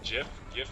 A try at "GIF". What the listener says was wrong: Did you just say GIF? Seriously, like with a J? No, it's not.